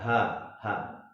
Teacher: H yang pertama ini yang H yang bulat, dia posisi di pangkal tenggorok. Ya, H.